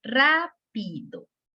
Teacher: La sílaba ra se escucha, pues, lo estamos escuchando más fuerte que pi y que do. Entonces, pi y do son unas sílabas átonas. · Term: sílaba tónica